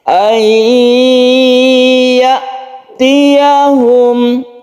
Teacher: Ketika sukun nun ini dia itu melebur atau masuk ke huruf ya sehingga menjadi tasydid ya.